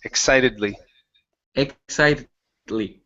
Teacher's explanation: instead of saying exited with the Z it's exy with a with an unvoiced S sound